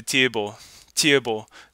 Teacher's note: that te is very high it's it's very palatalized